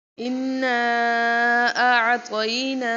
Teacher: ایک تو تشدید کا قاعدہ آ رہا ہے، یعنی ہم نے اس کے اوپر نون مشدد ہے تو نون مشدد پہ غنہ کیا جاتا ہے، تو یہاں ہم نے غنہ کرنا ہے